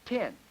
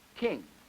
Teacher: the initial phone in the T series, or the T family, also is aspirated and blows out